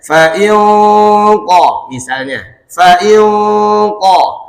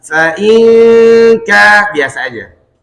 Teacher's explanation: Coba kalau umpama ini bukan huruf kaf tapi huruf qaf. Huruf qaf huruf isti'la, maka dia akan ikut tebal gunnahnya.